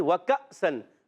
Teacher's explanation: اچھا کاف باریک رکھنا ہے، زبان کی جڑ تالو کا سخت حصہ. اب دیکھیے اس الف کے اوپر پھر جزم آ گیا.